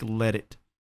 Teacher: I think he drops the T there in it. · you have a flap T, or an American T, as we call it, in let. So let it sounds like a D.